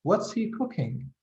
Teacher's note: you go down in the end this is what we call a falling intonation